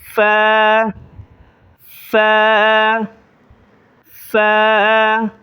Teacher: اس لفظ کو زیادہ نہیں کھینچیں گے، ایک الف کے بقدر کھینچیں گے · یہ اوپر کے جو دانت ہیں وہ نچلے ہونٹوں پر لگائیں گے تو یہ لفظ نکل آئے گا ف